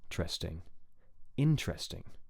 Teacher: of the vo is usually higher on the stress syllables so the pitch is high on the stress syllable in and then drops quickly for the other two